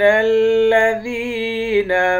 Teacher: ذال کو یا کے ساتھ ملا کر یا کو ایک الف کی مقدار کھینچیں گے، یا حروف مدہ ہے